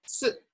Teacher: 4 is like a high falling.